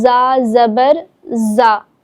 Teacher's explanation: کیونکہ دیکھیں زا جو ہے وہ سختی اور سیٹی کے ساتھ پڑھا جاتا ہے